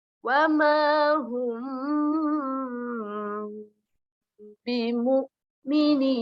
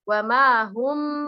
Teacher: Bagaimana cara membacanya? Cara membacanya samar-samar di bibir. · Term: ikhfa syafawi